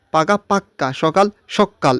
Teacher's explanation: শব্দে জোর দেওয়ার জন্য শব্দের অন্তর্গত ব্যঞ্জনের দ্বিত্ব উচ্চারণ হয়, একে বলে দ্বিত্ব ব্যঞ্জন।